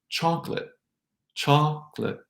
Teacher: The 3 syllables chocolate become 2. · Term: chocolate syllables